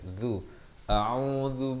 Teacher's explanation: Hamzah A di pangkal kerongkong, Ain di pertengahan kerongkong, baris dhammah 2 harakat. Zal baris dhammah di hujung lidah